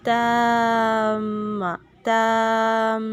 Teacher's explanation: تا کو ہی لمبا کرتے ہوئے میم کے ساتھ ملانا ہے